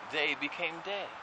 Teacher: No th sound. So anything with a th was replaced with a d.